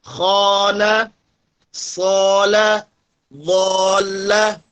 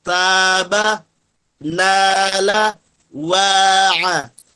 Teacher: Kalau huruf sebelumnya dia isti'la, maka alif ini dibaca tebal atau tafkhim. Kalau huruf sebelumnya dia istifal, maka alif ini menjadi tarqiq.